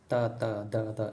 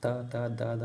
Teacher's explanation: ತ ದ ದ ನ ಲ ಇವೆಲ್ಲ ಅಕ್ಷರಗಳು ಹಲ್ಲುಗಳ ಸಹಾಯದಿಂದ ಹುಟ್ಟುವುದರಿಂದ ಇವುಗಳನ್ನು ದಂತ್ಯ ವರ್ಣಗಳು ಎನ್ನುತ್ತಾರೆ